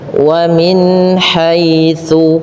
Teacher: jelaskan bunyi suara nunnya pada lafal wamin haitsu dengan menyempurnakan kasrah pada huruf mim agar terdengar dengan i-nya sempurna